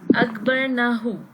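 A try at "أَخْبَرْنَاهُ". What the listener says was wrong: Akbar Nahu. It's only na single fatha, Ustad. Akbar Nahu. Akbar Nahu. Okay, so who is the attached pronoun here? Akbarnahu. Akbarna will be like Nasarna.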